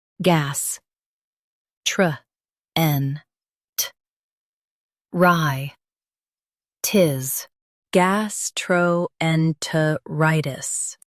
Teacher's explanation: Stress rye and keep gas light.